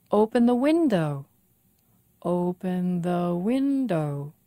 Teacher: open the window five syllables stress on win